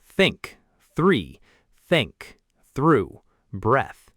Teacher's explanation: The tongue placement is the key. The second TH sound is unvoiced. Your vocal cords don't vibrate.